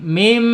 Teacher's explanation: walaupun di sini ada nun tapi harus dibaca iqlab, yaitu menjadi mim